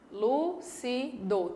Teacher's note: E a antepenúltima, última, penúltima, antepenúltima. A antepenúltima sílaba é a mais forte, então lúcido está correto. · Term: proparoxítona